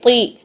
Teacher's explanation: जेर में झुकाव जो है वो नीचे की तरफ होता है, तब भी इस हर्फ को मोटा ही रखेंगे